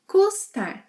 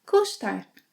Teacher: She says custar with a sh sound.